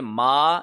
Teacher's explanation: الف مدہ کا قانون لاگو ہو رہا ہے، 1 سیکنڈ لمبا کھینچ کے پڑھیں گے